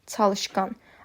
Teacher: A və ı saitləri qalın saitlərdir.